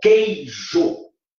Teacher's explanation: Ouçam que o U não tem som. Então, em queijo, ó, vou dividir, em queijo, a gente tem, na verdade, ó, um ditongo. · Ditongo, porque o U não tem som. Como o E é a vogal e o I é semivogal, a gente fala que o ditongo é decrescente. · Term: ditongo decrescente